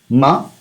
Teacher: So last time I did not mention this, but these are all nasal sounds and including ma, including ma. Though we pronounce it using lips, ma, but it is also a nasal sound.